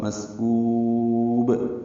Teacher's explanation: مسکوب سین ساکن پہ ہمس ہے، اور یہ سین باریک ہے، کاف باریک ہے، کاف کو لمبا کریں گے، با ساکن پہ قلقلہ ہوگا